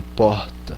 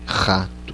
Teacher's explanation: E esse porta é diferente do de rato, é menos rasgado, tá? Ele é feito numa parte mais baixa da garganta aqui, porta, diferente de rato, que é mais lá em cima, assim, já atrás na boca, ó.